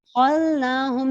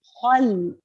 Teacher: جیسے یہاں بھی مثال ہے وَلَأَدْخَلْنَاهُمْ، خَلْنَاهُمْ نہیں، خل، مکمل لام کو ظاہر کر کے پڑھیں گے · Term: اشد الاظہار